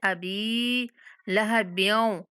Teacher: बा पे कलकला करते हुए वाव के साथ मिलाएंगे। लहब्यों व तब, बा हरूफ कलकला में से है तो इसलिए इसको सख्ती से पढ़ेंगे, पढ़ते हुए हिला के पढ़ेंगे।